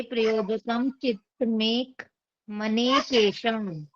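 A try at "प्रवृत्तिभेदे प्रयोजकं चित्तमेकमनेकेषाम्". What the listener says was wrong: केशमनी केशाम, थोड़ा सा आ का ना आपका छूट जा रहा है, तो उस चीज का ध्यान देंगे। प्रवृत्ति भेदे प्रयोजकम चित्तमेक मनेकेशाम। प्रवृत्ति भेदे प्रयोजकम चित्तमेक मनेकेशाम, इस प्रकार से पढ़ना है आपको। प्रवृत्ति भेदे प्रयोजकम चित्तमेक मनेकेशाम।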